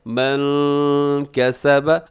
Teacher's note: نون ساکن کے بعد کاف ہے، یہاں پہ آپ نے اخفا کرنا ہے